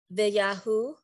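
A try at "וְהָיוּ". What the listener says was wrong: Wait, I think you reverse those sounds. Vehayu. Vehayu.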